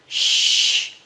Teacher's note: sh is unvoiced sound without vibration